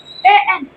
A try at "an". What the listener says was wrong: An, not A N. We pronounce it an.